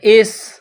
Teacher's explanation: سین میں سیٹی کی آواز پیدا کرنی ہے، سین کو پتلا کرنا ہے